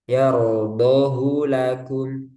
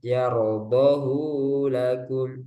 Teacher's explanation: Yardohu lakum tidak dibaca panjang menurut riwayat Hafz. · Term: satu harakat